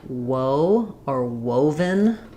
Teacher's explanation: the O is already a round shape, but woe opens to that O. So again, like we were talking about with our earlier glide, the y glide, w is also a glide.